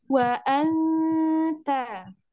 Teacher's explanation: Ikhfa, maka nun sukunnya dibaca samar.